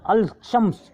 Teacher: الشمس کے تلفظ میں لام کی آواز نہیں شامل ہوتی ہے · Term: حروف شمسی